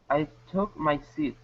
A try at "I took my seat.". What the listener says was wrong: There you go, good.